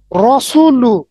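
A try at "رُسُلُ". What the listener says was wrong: রুসুলু। রসুলু বললে কি দেখেন, আমরা কি বলেছিলাম, পেশ বাংলাতে উচ্চারণ হয় রসু, উকার দিয়ে। তার মানে রসুলু বললে হবে না, রুসুলু বলতে হবে। রুসুলু।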